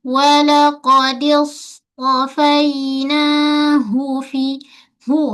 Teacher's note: Ha pula tonjul baik-baik dari pangkal kerongkong.